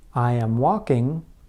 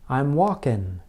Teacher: What is important is that the speakers are changing the place of articulation. Instead of making the sound with the back of the tongue, Americans make the n sound with the very front of the tongue.